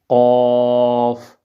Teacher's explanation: اب قاف کا جو مخرج ہے وہ حلق کے سب سے نچلا حصہ ہے، یعنی حلق کے ہم نے جو حلق کے 3 حصے بنائے تھے، اوپر والا جو منہ کی طرف ہے ایک حصہ، درمیان والا دوسرا حصہ اور نچلے والا جو ہے تیسرا حصہ۔ تو قاف جو ہے یہ حلق کے تیسرے حصے سے ادا ہوتا ہے، یعنی نچلے کی طرف جو پیٹ کی طرف جو حصہ ہے حلق کا، تو قاف جو ہے یہ وہاں سے ادا ہوتا ہے، قاف۔